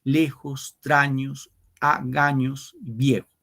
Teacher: todos son palabras graves, fíjense, el acento va en la penúltima sílaba.